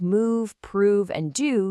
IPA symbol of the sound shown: uː